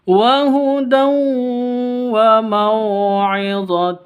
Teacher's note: diawali dengan fathah h bayanini waud wa maidun w w Hud tanwin bertemu dengan wau masuk ke wau disertai dengung Idam bunah seperti itu dengung disertai dengung dua ketuk wa Hud